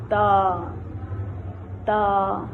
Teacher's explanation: زبان کی نوک جب سامنے والے دانتوں کے ساتھ لگے تو تا ادا ہوتا ہے